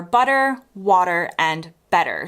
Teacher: In most American accents, a T sandwiched in between two vowels often gets softened into a sound between a T and a D. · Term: T-flapping